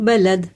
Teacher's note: دال میں ساکن ہو گئی تو اس میں قلقلہ ہوا